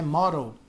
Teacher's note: Esse D aqui vira quase um R